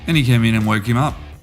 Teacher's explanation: we have linking of the k, and we lose the first sound of h in him